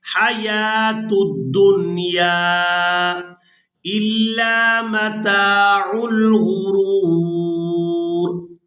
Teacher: اس کے بعد جو واو دیکھ رہے ہیں یہ واو خالی ہے یعنی اس کے اوپر کوئی حرکت نہیں ہے تو اس کو ہم ادا بھی نہیں کریں گے